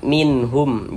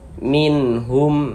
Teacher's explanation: izhar halqi, dia dibaca jelas dan tidak didengungkan. Jadi tidak didengungkan, jangan ditahan suaranya, jangan dipanjangkan, jangan dibaca min.